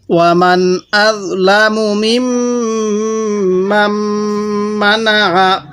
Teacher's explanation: এখানে মান পড়ব না, মাম এই মিমের সাথে লাগিয়ে দিব